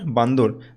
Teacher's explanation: এখানে বানর থেকে বান্দর, ঠিক আছে, মাঝখানে হচ্ছে ব্যঞ্জনের আগমন হয়েছে, এটা হচ্ছে মধ্য ব্যঞ্জনাগম